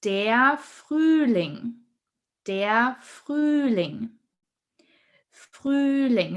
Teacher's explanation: So here we have a long stretched Ü sound.